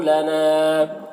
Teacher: لنا یہاں پر وقفی کی صورت میں ایک الف کو پڑھنا ہے، الف مدہ کو پڑھنا ہے